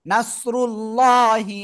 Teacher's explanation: এটা নাস সদ র লাম পেশ রুল লাম খাড়া জবর ল আল্লাহ শব্দের লামের ডাইনে পেশ মোটা আওয়াজে পড়তে হবে রটাও মোটা